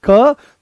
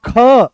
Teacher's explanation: जैसे ही आप बोलोगे क, तो बड़ी सरलता से निकल आया, पर जैसे ही बोलते हो आप ख, तो जोर लगाना पड़ा। नोटिस करो, दोनों को एक साथ बोलो क ख, तो जैसे ही ख बोलते हो तो पूरे कमर तक इसकी दम निकलता है।